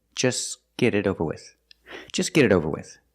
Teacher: You don't hear the T in just. Because it's between consonants, you don't hear it.